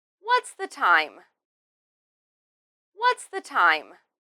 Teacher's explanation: in this question we emphasize what and time and then end it in a falling tone